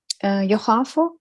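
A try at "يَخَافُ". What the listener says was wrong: No, khafa, yakhafu. Ya has a fatha.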